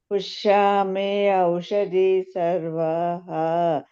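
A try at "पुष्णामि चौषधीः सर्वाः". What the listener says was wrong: ಚೌಷದಿ ಚೌದಿ ಅಂತದು ಚ ಅಕ್ಷರನೇ ಹೋಗಿಬಿಡುತ್ತೆ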